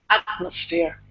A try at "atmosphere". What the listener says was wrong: Okay, good.